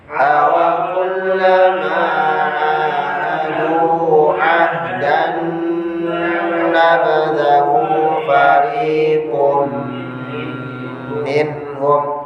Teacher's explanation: Lamakan lagi nahan nunnya ya.